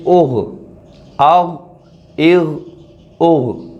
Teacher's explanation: یہ غین حروف مستعلیہ میں سے ہے تو اس کو ہم پر پڑھیں گے